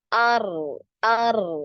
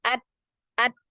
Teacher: Nah ini huruf ro kan ada aliran suaranya ya jadi ketika disukun dia ngalir suaranya ar ar nah sedangkan huruf Dal ini tidak dia tidak ngalir